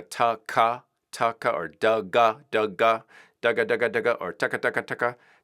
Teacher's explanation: a sound that's using the dental like a tongue on the teeth first and then something on the back of the throat